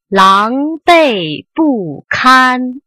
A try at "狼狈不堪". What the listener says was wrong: 堪 调 值 低 了 ， 狼 狈 不 堪 ， 狼 狈 不 堪 ， 不 是 狼 狈 不 堪 ，